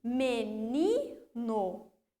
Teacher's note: Ni é a sílaba tônica da palavra menino.